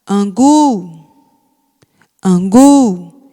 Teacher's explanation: Então, a sílaba tônica é o gu.